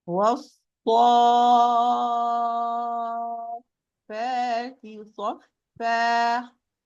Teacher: It's called mad لازم. It's for 6 counts. مد لازم كلمة مثقل because it's followed by a letter with a sukun.